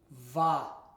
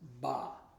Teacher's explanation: the dagash the dagash or dagash here makes a VA sound it's the letter bet but it's softened and it makes a VA sound